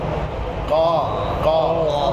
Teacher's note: کوے کے متصل زبان کی جڑ اوپر تعلق کی طرف لگے, اس سے قاف نکلتا ہے